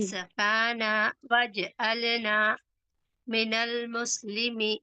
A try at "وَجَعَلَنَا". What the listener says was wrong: جی وج نہیں بولنا ہے وجعلنا، واو پر زبر ہے، جیم پر زبر،